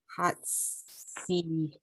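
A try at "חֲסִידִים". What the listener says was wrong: It's cha. That's a chet. Cha sidim.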